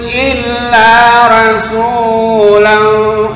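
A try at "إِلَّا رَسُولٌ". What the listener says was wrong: Lung. Ini tanwin dhammah. Lung.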